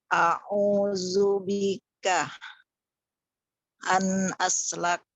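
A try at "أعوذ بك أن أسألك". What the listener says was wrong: Iya, tapi an alak. Ada hamzah nih jangan pilih tuh.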